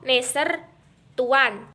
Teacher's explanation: huruf N merupakan kontoid nasal, apiko-alveolar dan bersuara